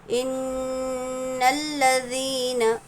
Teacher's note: جب بھی نون اور میم پر تشدید آئے گا تو وہاں پر ہم کو غنہ کرنا ہے. غنہ یعنی کیا؟ ناک میں تھوڑی دیر آواز کو ہم روکیں گے.